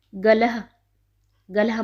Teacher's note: जहाँ भी विसर्ग होगा आपको उसको ह की साउंड लेते हुए पढ़ना है